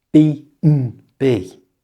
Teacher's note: To pronounce this correctly, change the and to just the letter n. So it sounds like this, B&B.